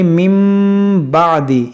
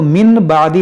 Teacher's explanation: यहाँ पर देखें नून साकिन के बाद बा है, तो यहाँ पर होगा इक़लाब, यानी इस नून साकिन को हम मीम से बदल कर पढ़ेंगे। यहाँ पर जो छोटा मीम बना हुआ है इसको हम पढ़ेंगे, इस नून को नहीं पढ़ेंगे।